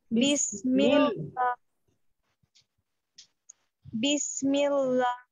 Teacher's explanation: বিসমিল্লাহির বিসমিল্লাহ, আবার বিসমিল্লাহির বিসমিল্লাহ যেন না হয়, বিসমিল প্রথম থেকেই পাতলা